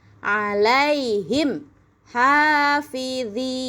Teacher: Jadi cara membacanya jelas di bibir dengan mulut tertutup. ya. Bacaannya enggak boleh dengung, enggak boleh ditahan. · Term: izhar syafawi